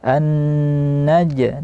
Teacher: Dia tidak boleh bercampur dengan nafas, tapi dia bunyi jim saja. An-naj diqalqalahkan.